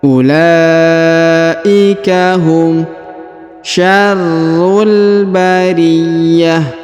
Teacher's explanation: Huruf la dipanjangkan 5 harokat karena terdapat tanda panjang 5 harokat ya. Wawunya tidak dibaca atau tidak dianggap ya.